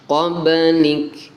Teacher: qablik dibaca qalqalah ya, ada pantulannya